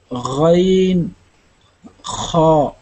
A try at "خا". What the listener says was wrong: اس کو اتنا زور دے کے نہیں پڑھتے. ہاں خا خا خا